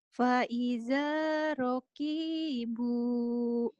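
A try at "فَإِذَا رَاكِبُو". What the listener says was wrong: Oh, kahan rohnya pendek. Fa'idha rakibu. Fa'idha rakibu.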